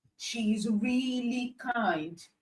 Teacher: The word really has been emphasized to show how kind she is. You can just say she's kind, but you emphasize the word really to show how kind she is. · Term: emphatic stress